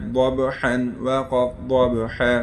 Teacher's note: با پر قلقلہ ہوگا ٹھیک ہے میں نے آپ کو بتایا تھا